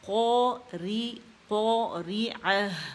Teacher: اور قو پہلے درجے کی تفخیم میں موٹا پڑ جائے گا، مخفم ہو جائے گا۔ الف جو ہے یہ قاف کے ساتھ جو ہے یہ حرف مستعلیہ ہے، ٹھیک ہے، تو استعلیٰ کی وجہ سے زبان کی جڑ پر جا کے نرم تالو سے لگ جائے گی قاف، تو قو ری قو ری عہ پڑھیں گے اسے، ٹھیک ہے، ال قو ری عہ پڑھیں گے۔